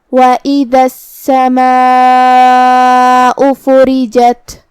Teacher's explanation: مد واجب متصل کا معنی ہے کہ حرف المد اور اس کی وجہ جو کہ حمزہ ہے دونوں ایک ہی کلمہ میں ہو. مد واجب متصل میں ہم اپنی آواز 4 مد کے برابر لمبی کریں گے